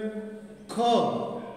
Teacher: ਖੱਖਾ ਧੁਨੀ ਉਚਾਰਨ ਵੇਲੇ ਇਸ ਤਰ੍ਹਾਂ ਆਵਾਜ਼ ਆਉਂਦੀ ਆ ਵੀ ਜਿਵੇਂ ਤੁਸੀਂ ਕੋਈ ਗਲਾ ਸਾਫ਼ ਕਰ ਰਹੇ ਹੋ ਹੈ ਨਾ, ਜਿਵੇਂ ਖ।